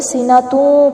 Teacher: کے اوپر دو پیش ہے اور آگے واو آ رہا ہے، تو ہونٹوں کو گول کرتے ہوئے سینہ توں پڑھیں گے